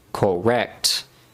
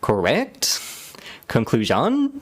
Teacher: you say the word correct naturally correct you want to drop down on that last word